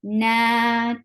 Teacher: Na, 2 counts long because alif sakina followed by fatha.